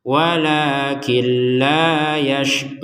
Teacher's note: Kalau digabungkan walakilla, killa dimasukkan tanpa dengungan